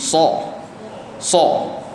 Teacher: Sifat huruf yang so ni yang mana kita kena memuncungkan sedikit dari mulut kita, beratkan hurufnya. Berat dan tebalkan hurufnya.